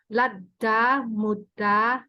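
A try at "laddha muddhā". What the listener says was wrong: Wait. So ladha mudha, because there's H. So H,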